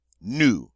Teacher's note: Notice the S is silent on the end, as most final consonants are in French.